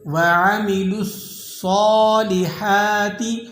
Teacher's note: صاد کو آپ نے موٹا ادا کرنا ہے، اور ہا کے بعد الف ہے تو آپ اسے ایک الف تک کھینچ لیں گے